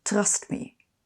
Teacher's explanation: don’t trill the r at the tip of your tongue, like in trust me.